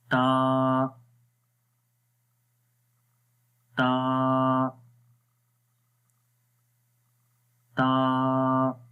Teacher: جب ہم کریں گے تا والے حرف کے اندر تو سانس آہستہ سے جاری رہتا ہے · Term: ہمز